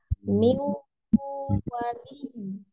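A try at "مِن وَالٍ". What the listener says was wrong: Jadi 50% hidung, 50% mulut. Mulut dia kerasanya di miu ya, monyongnya itu ya. Kemudian ada dengungnya dimasuk ke hidung 50%. Masih kebanyakan ke hidung tadi.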